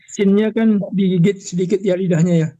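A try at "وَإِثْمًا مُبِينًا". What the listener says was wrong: Jangan digigit, ditempelkan doang. jadi keras bunyinya. Jangan digigit, ditempelkan doang sedikit, ditempel. Kalau digigit jadi keras bunyinya.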